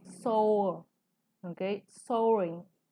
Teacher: Pero en inglés, estas dos, como mencionamos hace rato, forman un diptongo, ¿ok? Que es un solo sonido vocálico, ya no es OA, sino es O